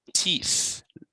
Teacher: It's a voiceless TH at the end of the word.